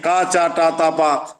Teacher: यह तीव्र स्पर्श वाले हैं समान प्रयत्न है